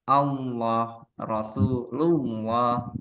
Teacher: Maka di situ ketika dia diawali fathah dan dhammah, Allah Rasulullah, maka menjadi tebal lamnya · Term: Lam jalalah